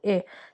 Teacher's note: Bir dənə E saitimizdir ki, dil ortası saitdir, amma incə olduğu üçün incə saitlərin içərisində verilir. Çünki E-ni deyəndə nə dil önə gedir, nə arxaya gedir. E, dil ortada qalır.